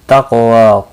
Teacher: क़ाफ़ मुस्तालिया है, पुर पड़ा जाएगा।